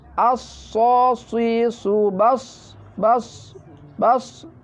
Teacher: Karena sifatnya sod adalah tadwir mempunyai bersifat berswit. Jadi bunyi berswit. Harus dalam pengucapannya lebih hati-hati daripada sin.